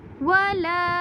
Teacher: لام کے اوپر چھوٹی مد ہے، اس لیے ہم اسے تین الف کے برابر لمبا کریں گے